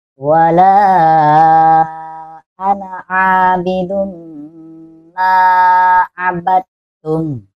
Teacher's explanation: nah la ini dibaca 5 harkat